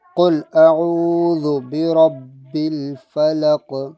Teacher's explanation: یہ والا قوف جو تھا یہ موٹا پڑا حلق سے، قل حمزہ باریک ہوگا، عین واو پیش او کو کھینچیں گے، واو سے پہلے پیش ہے، ذال کو نرم پڑھیں گے، یعنی یہ آواز نہیں آئے گی، ذال پڑھیں گے۔